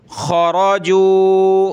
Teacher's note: خا را موٹا کریں گے